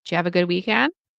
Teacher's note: You might even hear when it's really fast, you might just hear Jew.